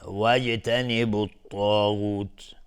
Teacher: جیم قلقله میخواد چون ساکنه. الطاغوت الف لام شمسی و طا از حروف استعلاء غلیظ تلفظ میشه.